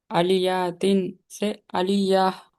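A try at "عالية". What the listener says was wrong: नहीं नहीं नहीं नहीं, यहाँ पे अलिफ मत छोड़ दिया ना आप। अलिफ मत। जबर जेर पेश को नहीं खींचना कभी भी। आलियतिन से आलिया, ऐसा। आलियतिन।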